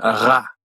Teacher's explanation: consonant and last consonant is the French R as in uh it's pronounced using the back of your tongue which pulls back all the way behind where you pronounce a G